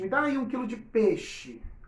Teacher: eu engoli uma vogal, eu reduzi o meu ditongo a uma única vogal. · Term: redução de ditongos